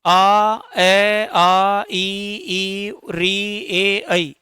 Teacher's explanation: इसके बाद में हम उच्चारण करें, आ ए आ ई री ए ऐ, इनका हम उच्चारण करें तो हमारे जो ओष्ठ की आकृति है वो क्या हो रही है? समान ही रही है, यानी कि हमारे ओष्ठ ना वो गोल नहीं हो रहे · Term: अवर्ताकार स्वर